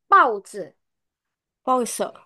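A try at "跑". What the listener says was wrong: Paunya kurang nada empat.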